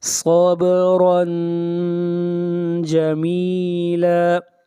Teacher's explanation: رن یہاں پر اخفا ہوگا اس لیے کہ تنوین کے بعد نہ حروف حلقی ہیں